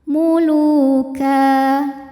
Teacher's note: Lu dihukumi dengan mad thobi'i zohiri. Sebab ada wau sukun didahului baris dhammah. Maka huruf lam panjang dua harakat. Muluka. Jika berhenti di ka hukumnya adalah mad iwad. · tanwinnya bunyi n-nya hilang ya, jadi ka dan panjang 2 harokat.